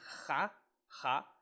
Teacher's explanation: é a aspiração forte, que vai ter esse som de H